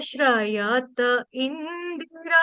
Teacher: रा में लंबा कर सकते हैं, दी में नहीं करना है।